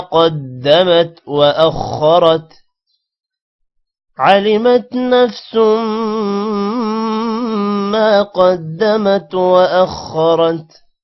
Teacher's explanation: تا پر قلقلہ نہیں کرنا، اور سین جب میم کے ساتھ ملے گا تو دو پیش کی وجہ سے غنہ ہوگا۔ ما قدمت، ما لمبا ہوگا الف کی وجہ سے اور قوف موٹا ہوگا۔